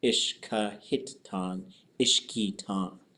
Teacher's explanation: So a lot of times the hit just totally goes away. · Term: contractions